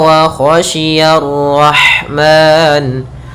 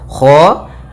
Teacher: Kha usahakan dia dari tenggorokan atas mendekati pangkal lidah kita. Kha, shi, hati-hati jangan sia, tapi dia huruf shin, yaitu dari tengah lidah kita.